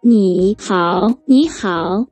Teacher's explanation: cuando tenemos dos tercer tonos juntos, el primero de esos tonos se convierte en el segundo tono. Por ejemplo, ni hao, ni hao.